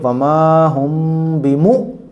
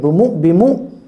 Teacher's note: حمزہ ساکنہ کے پڑھنے میں جھٹکا ہوتا ہے۔ حمزہ کے اوپر جب جزم لگی ہوگی تو وہ حمزہ ساکنہ کہلاتا ہے، اور حمزہ ساکنہ کے پڑھنے میں جھٹکا ہوتا ہے۔